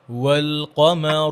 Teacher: ওয়াওটা গোল করে, ওয়াল কমারু যেন ওয়াল মোটা না হয়ে যায়।